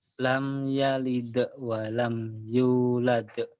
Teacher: lamnya pendek di sini idhar